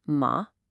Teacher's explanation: the dipping and rising third tone